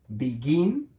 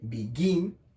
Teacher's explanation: el acento está en el gin